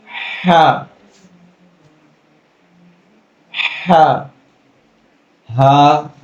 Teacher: گلے کے نیچے والے حصے سے ہا